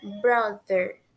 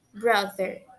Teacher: Tem um som de Z, colocando nossa língua nos dois dentes superiores da frente. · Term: pronúncia do TH